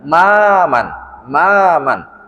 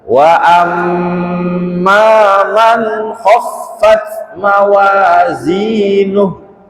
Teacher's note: Ma-nya itu panjang, satu ayunan. Maman, maman, dan didengungkan ketika mimnya.